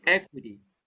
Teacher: you have the stress on the first syllable